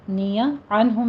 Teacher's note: عنہم میں نون ساکن کا قاعدہ اظہار حلقی